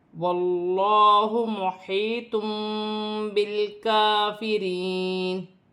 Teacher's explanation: قرآن پاک میں جب بھی دو زبر دو زیر دو پیش کی تنوین کے بعد با آئے گی تو وہاں پر چھوٹی سی میم لکھی ہوتی ہے۔ تنوین کی آواز کو میم سے بدل کر غنے کے ساتھ ادا کیا جائے گا